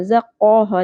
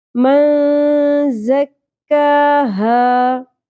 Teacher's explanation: ٹھیک ہے، زا کو شدت اور سیٹی کے ساتھ ادا کریں گے. من زکاہا، کاف کو پر نہیں کرنا، قوف کی طرح نہیں پڑھنا. زقوہا نہیں پڑھنا.